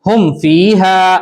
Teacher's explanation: ہم فیہا، اس میں ہر ایک مثال کو اظہار کر کے پڑھیں گے، یعنی جلدی پڑھیں گے، میم کی آواز کو ظاہر کر کے بغیر غنہ کے جلدی پڑھیں گے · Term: اظہار شفوی